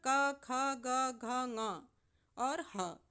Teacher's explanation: मतलब यह है कि जब आप उच्चारण करेंगे इन वर्णों का तो आप देखेंगे कि आपकी जीभ तो कहीं स्पर्श नहीं कर रही है लेकिन जो ध्वनि निकल रही है वह कंठ से निकल रही है। इसलिए यह वर्ण कंठ से उच्चारित माने जाते हैं।